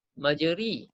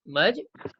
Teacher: Tanda diamond ni maknanya ra ni bukan baris atas, bukan baris bawah. Kalau baris bawah bunyinya ri, majri. Tapi dia bunyi majre. Kan? Bismillahi majreha wa mursaha majre. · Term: imalah